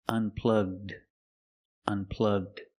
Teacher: Link the g sound with the d. unplugged unplugged It's unplugged.